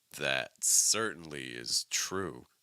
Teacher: go up on certainly but certainly is not the primary stress the primary stress is true